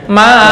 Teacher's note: Bukan manzalallah, itu tashil. Ini tahqiq. Harus kelihatan hamzahnya.